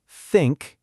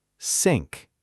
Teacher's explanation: Think uses your tongue near your teeth. Sink uses your tongue near the roof of your mouth.